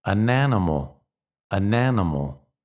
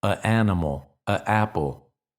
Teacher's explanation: put the N with animal as if it were nanimal, a nanimal, a nanimal. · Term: say the N